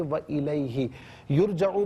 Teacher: را ساکن ما قبل یہاں پر پیش را ساکن کو پر کر کے پڑھیں گے